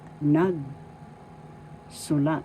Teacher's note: the accent is in the first syllable